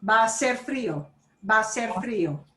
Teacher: That means the H disappears. So all those A's are going to sound like they're sliding together.